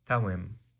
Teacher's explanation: it's spelled with a D, but it becomes a ta sound in modern Aramaic